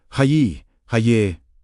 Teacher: The first syllable rises. The second settles.